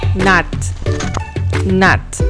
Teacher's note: N is a voiced alveolar nasal.